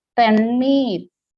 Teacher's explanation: When you say tannir, the tongue gets rolled.